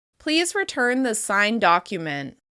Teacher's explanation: we use the /d/ sound to flow on to the next word. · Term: gemination